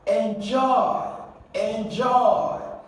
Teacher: this is a verb an action okay so you going to stress the second syllable